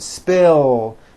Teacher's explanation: spill ends with a voiced l sound